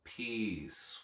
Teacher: What do we know that's unique about the word peace? So peace, it's got that beautiful long vowel sound. That C has a very S quality, a hiss quality to it.